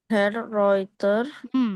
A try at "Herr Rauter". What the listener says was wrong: bukan Herr Reuter, tapi Herr Rauter, richtig, yang ini. Rauter, Reuter, Reiter, ya. Jelas ya, EI, EU, AU.